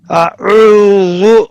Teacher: اب یہاں پہ آگے شروع میں حمزہ ہے اور آگے عین ہے اور آگے واو مدہ ہے. یہ حمزہ کو جھٹکے کے ساتھ زبر اس کو ادا کرنے کے بعد عو آئے. آؤ نہیں.